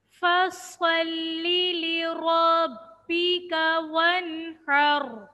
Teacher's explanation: صاد میں سیٹی کی بھی آواز آئے گی. را کے اوپر زبر، را کو موٹا پڑھیں گے.